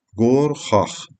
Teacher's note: Çünki ağ şəkilçisi millidir. Milli sözlərin sonunda gələn Q hərfi x kimi tələffüz olunur